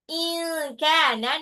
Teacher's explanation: In kana nun sukun ketemu kaf agak eng ya itu ikhfa. In kana tapi enggak semua ikhfa eng ya, cuman kalau ketemu nun sukun atau tanwin bertemu kaf atau qaf aja ya.